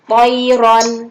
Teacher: disebut dengan hukum bacaan ro tafkim atau ro yang tebal, dibacanya tebal